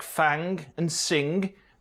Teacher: So in words like fang and sing, they stopped saying the g at the end and were left with just the velar nasal ng. This didn't always happen in the middle of words, which is why most accents of English have finger with a G, but singer without one.